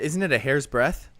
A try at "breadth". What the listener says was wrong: No, it's not a breath. It's a breadth.